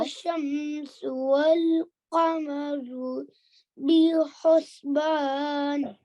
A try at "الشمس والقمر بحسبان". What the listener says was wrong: Perfect. Well done.